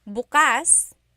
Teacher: If you say bukas, the emphasis is on the second syllable. That means open.